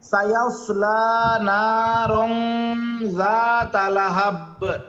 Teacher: নুনের পরে খালি আলিফ, জবরের পরে এক আলিফ টান আছে